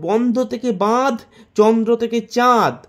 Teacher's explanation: তৃতীয়ত, রাঢ়ীতে স্বরসঙ্গতির ফলে শব্দের মধ্যে পাশাপাশি বা কাছাকাছি অবস্থিত বিষম স্বরধ্বনি সম স্বরধ্বনিতে পরিবর্তন হয়ে গেছে, দেশি থেকে দিশি। চতুর্থত, শব্দ মধ্যস্থ নাসিক্য ব্যঞ্জন যেখানে লোপ পেয়েছে সেখানে পূর্ববর্তী স্বরের নাসিক্য ভবন ঘটেছে